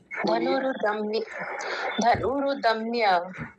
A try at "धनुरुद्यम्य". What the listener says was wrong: रुदम्य नहीं रुद्यम्य, इसमें द और य छुपे हुए हैं, द और य, ये जो होता है। धनुरुद यम्य, यम्य या है होता है इसमें। थोड़ी देर रुक ही जाइए इस पे, थोड़ा सा गैप कर लेंगे तो आसान हो जाएगा, फिर बाद में मिला के बोलेंगे पूरा।